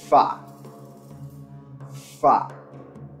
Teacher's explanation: The horned viper is a voiceless labial dental fricative, produced constricting airflow without vibrations of the vocal cords through a narrow channel at the place of articulation, causing turbulence with the lower lip and the upper teeth.